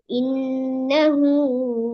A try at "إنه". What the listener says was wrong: என்ன அளவில்லாம போகுது.